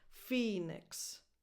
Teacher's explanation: So it's a lax E, but almost a schwa, basically, because again, unstressed, so undefined